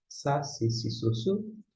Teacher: O Samer corresponde ao nosso S, é aquele S bem sibilante, bem fraquinho.